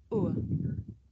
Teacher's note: The shape the mouth makes changes from the beginning of the sound to the end. It's pronounced ur. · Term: diphthong